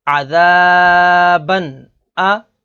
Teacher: عین زبر ع، ذال الف زبر ذا، عذا، با دو زبر بن، عذابن، حمزہ زبر آ، عذابن آ۔ اس میں تنوین کے بعد اگلا حرف حمزہ ہے، حمزہ حروف حلقی میں سے ہے، تو یہاں پر اظہار ہوگا یعنی غنہ نہیں کریں گے